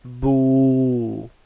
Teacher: so the oo sound, alright, that's from the jawf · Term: waw sakin